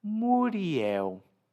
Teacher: O suave redondo dos lábios abrindo-se para dar vez a um toque nos dentes, com a ponta da língua, indo findar-se num biquinho mais lindo com o El.